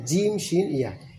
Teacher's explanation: জিহ্বার মধ্যখান তার বারাবার উপরে, তার সঙ্গে লাগে জিম শিন ইয়া